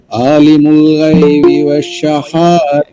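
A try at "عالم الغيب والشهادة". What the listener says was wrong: আলিমুল গায়বি বলা যাবে না, গায়বি বলতে হবে, ঠিক আছে? গয়নকে গয়ন বলতে হবে।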